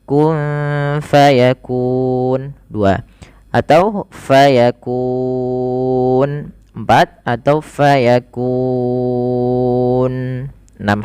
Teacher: Panjangnya dia kita boleh 2 harokat, boleh 4, boleh pula 6 harokat. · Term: mad arid disukun